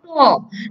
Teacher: উচ্চারণের সময় জিহ্বার সাথে মাড়ির কিন্তু একটি সংঘর্ষ হচ্ছে। ট যদি উচ্চারণ করো, দেখবা তোমরা উচ্চারণের সময় জিহ্বার সাথে তোমার মাড়ির একটি সংঘর্ষ হচ্ছে যখন আমরা টটা উচ্চারণ করতে যাই।